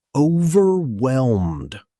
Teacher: Notice the silent H. It's pronounced overwhelmed, not overwhelmed.